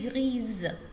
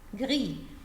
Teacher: if we have one S between two vowels, I will pronounce Z